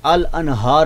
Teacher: इजहार, यानी नून को जाहिर करके पढ़ते हैं, नून को अपने मखरज से जाहिर करके पढ़ते हैं